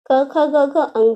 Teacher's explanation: क वर्ग में क, ख, ग, घ अंग आते हैं, जिनका उच्चारण स्थान कंठ है।